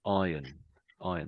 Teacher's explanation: So the R is completely silent for English people.